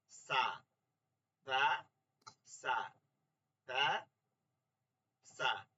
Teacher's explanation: উচ্চারণটা বের হয়েছে কোথা থেকে কোথা থেকে, জিহ্বার আগা উপরের দুই দাঁতের আগা থেকে, এই যে বের হয়ে আসছে উচ্চারণটা, এটাকে বলে কি মাখ রজ, মাখ রজ।